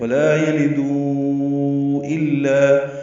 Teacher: یلدو میں دو واو مدہ ہے اور اس کے بعد حمزہ آنے کی وجہ سے مد منفصل ، ولا یلدو الا، ہم دال کو چار حرکات لمبا کرتے · ہم دال کو چار حرکات لمبا کرتے ہیں